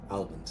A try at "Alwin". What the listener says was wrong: Alvin with a W.